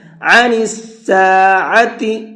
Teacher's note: يسألونك عن الساعة أيان مرساها، عن الساعة، یہاں پر دو عین ہیں، دونوں جگہ پر عین کا ساؤنڈ ہونا چاہیے، حمزہ کا ساؤنڈ نہیں ہونا ہے۔ حمزہ کے اور عین کے ساؤنڈ میں بہت بڑا فرق ہوتا ہے، تو آپ کو یہاں پر عین کے ساؤنڈ کے ساتھ میں پڑھنا ہے۔